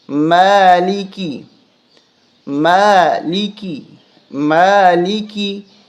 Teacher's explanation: اس کو ملکی نہیں پڑھیں گے، میم کو کھینچیں گے، کھڑا زبر ہے